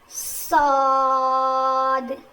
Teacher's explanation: زبان کی نوک کو نیچے کے دانتوں کے جڑ میں لگانے سے صاد ادا ہوتا ہے